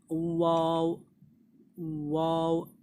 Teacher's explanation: वाव में जो है हमें दोनों होठों को एकदम गोल कर देना है। वाव, वाव, ऐसे करके वाव निकलता है।